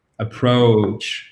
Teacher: Vous avez un mot de 2 syllabes avec un accent tonique qui est sur la seconde, donc il ne faut pas se tromper, il ne faut pas dire approach, d'accord?